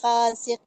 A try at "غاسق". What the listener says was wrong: غاسق، ان کو موٹا کیجیے، غاسق.